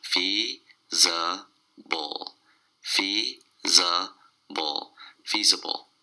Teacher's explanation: It's three syllables and the stress is on the first syllable.